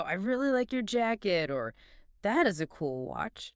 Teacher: You want your pitch to go up slightly at the end of the phrase.